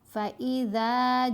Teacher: ذال کے اوپر زبر ہے، ساتھ الف حرف مدہ ہے، ذال کو لمبا کیا 2 حرکات کی مقدار · جیم کے اوپر مد متصل ہے، جیم کو 5 حرکات کی مقدار لمبا کریں گے۔ مد متصل کی پہچان، مد کے فوراً بعد آئین جیسا حمزہ آپ کو ملے گا، اور یہ مد اور آئین جیسا حمزہ ایک ہی کلمہ میں اکٹھے آئیں گے، ایک ہی سیم ورڈ کا حصہ ہوں گے، ساتھ ساتھ آئیں گے۔